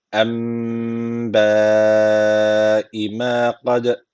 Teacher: d harfi cezim aldığı için burada kalkale tecviti var. Birazcık vurguluyoruz.